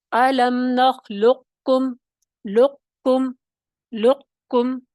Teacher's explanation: تو اب اس حساب سے دیکھتے ہیں ہم، دیکھیں الم نخلقکم، اس کو 2 طریقے سے پڑھا جاتا ہے، یعنی شروع میں آپ کو ناقص میں کیا ہوگا، موٹے قاف کی آواز سنائی دے گی، پھر آپ باریک قاف کی طرف جائیں گے